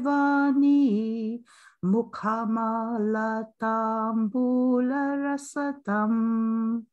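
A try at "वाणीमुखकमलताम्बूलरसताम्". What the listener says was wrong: Mukha kamala is there and rasatam is there.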